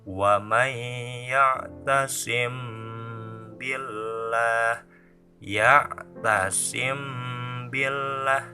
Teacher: jika ada mim mati menghadapi huruf ba, maka membacanya harus digunahkan. Harus ada yang masuk ke hidung. Dan itu disebut ihfa syafawi. · apabila mim sukun menghadapi huruf ba maka membacanya harus gunah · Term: ikhfa syafawi